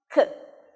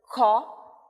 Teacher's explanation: nós fazemos com a parte de trás da língua é a parte de trás que levanta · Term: som de c